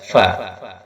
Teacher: Bibir bawah disentuhkan pada ujung gigi seri yang atas, fa.